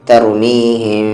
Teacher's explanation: جیسے سورہ فیل کا اگزامپل لے، ترمیہم، تو یہاں پر اخفا بھی ہو رہا ہے اور غنہ بھی ہو رہا ہے۔ اسٹارٹنگ میں تھوڑی دیر کے لیے جو لپس ہے وہ ٹچ نہیں ہوں گے، لیکن جب میم کو بولیں گے تو پھر غنے کے ساتھ وہ ٹچ ہوگا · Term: اخفا میم ساکن